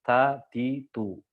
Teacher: Ta ini kalau misalkan berharokat, ya, dia tetap ada hamsnya.